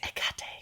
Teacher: I pronounced it Hekate because the H is silent.